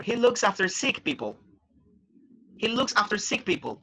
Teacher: Remember the intonation, right? It goes down because you are not reading questions.